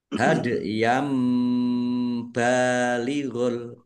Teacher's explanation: Fathah tanwin bertemu dengan huruf bacaan iqlab ya dibaca membalik mimnya dibaca mim dulu hadam balighul ini ditandai ada mim kecil berdiri kalau mim kecil miring itu tanda wakaf wakaf yang harus berhenti.